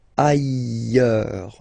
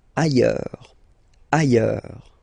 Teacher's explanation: final S not pronounced, and then you've got this y sound